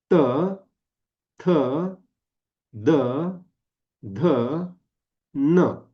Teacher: न म्हणताना पण जीभ कुठे गेली आहे? दाताला गेली आहे. · ही व्यंजन उच्चारताना काय झालं आपली जीभ दाताला टेकते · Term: दंतव्य